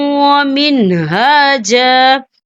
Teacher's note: تو یہاں پہ ٹھہرنا بہتر ہے. وقف کی صورت میں ایک زبر پڑا جائے گا. 2 زبر نہیں پڑے